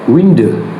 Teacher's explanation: in the British realization of window, the nucleus is short, the most neutral central sound in English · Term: diphthong nucleus